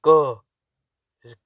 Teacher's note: स्पर्शी में इन व्यंजनों के उच्चारण में मुख से किसी भाग में वायु का पूर्ण अवरोध होता है और फिर अचानक वायु निकलती है। जैसे क, पहले क काफी देर मुख में रहता है, फिर अचानक से वायु निकलती है।